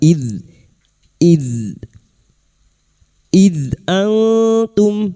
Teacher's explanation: dalal sukun lagi bukan qalqalah ya. Jangan dipantulkan.